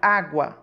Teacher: a palavra água com o som mais forte e aberto recebeu o acento agudo